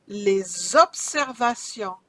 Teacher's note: I drag the S to the O, Z sound.